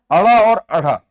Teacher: ये मूर्धन्य उत्क्षिप्त ध्वनियां है